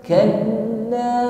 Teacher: Kalla huruf lam tasydid ditekan membacanya.